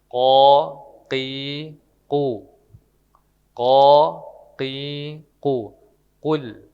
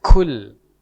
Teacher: di quul itu pakai huruf qo bukan pakai huruf k jadi tidak ada keluar angin